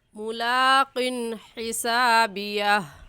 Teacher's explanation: हमज़ा हा आइन हा गैन खा में से हा आ गया है, इसलिए इस तनवीन पर हम गुन्ना नहीं करेंगे